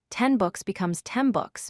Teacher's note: For example, 10 books becomes 10 books because the N changes to match the B sound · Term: regressive assimilation